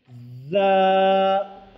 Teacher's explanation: ऊपर के चार दांत और नीचे के चार दांतों के किनारे पर ज़ुबान की नोक को लगाने से ज़ा अदा होते हैं। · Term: ज़ा का मखरज